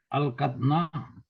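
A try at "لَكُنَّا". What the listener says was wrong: हाँ, अलकन्ना, अलकतना, अलकतना नहीं होता, अलकन्ना, अलकन्ना। हाँ, उस तरह जो है ना ये अलकना हो जाता है, सिर्फ नून नुस्वा लग जाता है।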